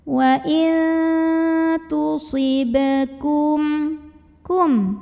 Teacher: Karena huruf qalqalahnya sukunnya asli dan ada di tengah-tengah bacaan kita. Maka cara bacanya adalah dipantulkan dengan pantulan yang kecil dan tetap mengalir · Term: qalqalah sughra